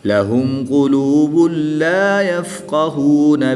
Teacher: دو پیش کی تنوین کے بعد حروف یرملون میں سے لام آ گیا تو یہاں پر ادغام بلا غنہ ہوگا، یہاں پر غنہ نہیں کریں گے۔